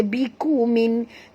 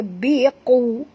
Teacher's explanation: huruf qaf tebal, jangan baca biku min tapi baca biqu